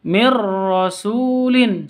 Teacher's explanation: nun sukun bertemu dengan ro cara bacanya jelas atau masuk tanpa dengung jadi langsung masuk ke ro tanpa dengung mirrasulin seperti itu Mir rasulin langsung masuk ke ro terus tanpa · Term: idgham bila ghunah